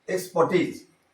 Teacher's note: So accent falls on the third syllable.